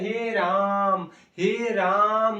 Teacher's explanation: अब फिर है हे राम हे राम मतलब राम के बाद जो हम लोग थोड़ा घिचाव कर रहे हैं यही है दीर्घ उच्चारण